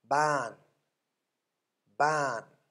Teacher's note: Middle class consonant initially, second tone mark, and living syllable, therefore falling tone.